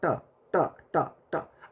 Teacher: आपका जी देखिएगा कि दांत के ऊपर जहाँ दांत गथा हुआ है, जहाँ दांत धसा हुआ है, देखिए वहाँ पर आपका जाके जी सटेगा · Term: मूर्धा